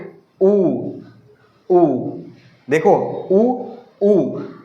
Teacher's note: छोटा ऊ, बड़ा ऊ, ओ और औ पे ओठ हमारा क्या हो रहा है? गोल घूम रहा है। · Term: वृत्तमुखी